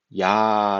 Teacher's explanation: 이와 아가 결합이 되면 우리 흔히 말하는 야 라는 소리가 나게 되는거죠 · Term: 이중모음